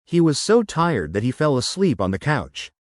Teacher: you caught the emphasis on tired and couch. Try slowing down slightly and connecting fell and asleep.